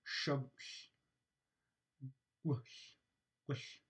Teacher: my lips are rounded while i am producing the g sound at the same time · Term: labialized voiced velar stop